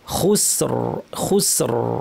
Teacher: তেমনি এই উদাহরণে খুসরিন, যদি আমরা খুসরিন পড়তাম জের দিয়ে পাতলা হতো, কিন্তু থামার কারণে সুকুন এসেছে, আগের হরফেও সুকুন আছে, আমরা তার আগে কি আছে দেখব, যেহেতু পেশ আছে সেই জন্য আমরা ভারী করে বলবো খুসর, খুসর।